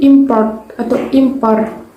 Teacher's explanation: Dalam hal ini, nasal apikoalveolar dijadikan nasal bilabial sesuai dengan fonem P yang bilabial, tetapi masih berbeda karena yang satu adalah nasal, sedangkan yang lain adalah konsonan hambat.